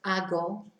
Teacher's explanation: We don't pronounce the H, so it's just hago